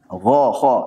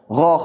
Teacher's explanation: Ini kan udah udahah masuk tenggorongan itu Sedangkan Gan juga begitu tenggorokan paling atas udah hampir kena ke Pangkal lidah